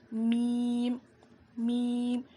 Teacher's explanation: دونوں ہونٹوں کے سوکھے حصے سے میم ادا ہوتا ہے. اس کو ہم 5 الف کے برابر کھینچیں گے.